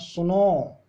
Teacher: सुनो में हमने लंबा टाइम तक खींचा है तो वहां भी प्लुत स्वर आता है